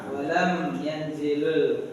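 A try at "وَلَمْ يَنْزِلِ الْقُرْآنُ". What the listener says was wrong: Bukan yanzil ya, li kasroh yang jelas, li bukan li, bukan lur juga li lam kasroh li ya. Walam yanzilil, apa dijawabkan?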